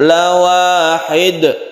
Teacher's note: karena di akhir kata, maka dalnya ini disebut qalqalah kubra.